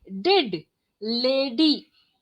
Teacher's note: When we say d, we are actually touching the upper part of the palate.